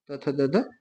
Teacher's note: त थ द ध दंत हो जाएंगे